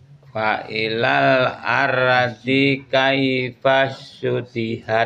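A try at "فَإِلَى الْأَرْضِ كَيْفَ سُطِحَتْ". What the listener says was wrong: Sekali lagi masih dinya masih tahan. Harusnya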